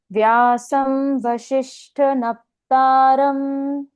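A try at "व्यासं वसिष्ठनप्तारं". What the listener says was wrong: Very good, एक और बार बोल देंगे।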